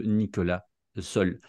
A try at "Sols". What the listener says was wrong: On dit Sols. Toutes les lettres se prononcent.